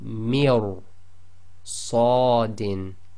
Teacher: So here we have mir sadin. Okay, so you've got to go straight from the mi, which is empty mouth, directly into ra, which is full mouth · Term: heavy tafkhim